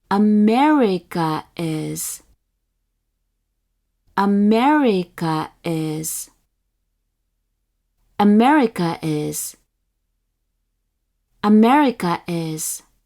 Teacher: one with the downstep on the second mora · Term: nakataka